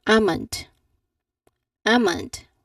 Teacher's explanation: What have you noticed upon me saying almond, that there is a silent L. I did not pronounce the sound of letter L.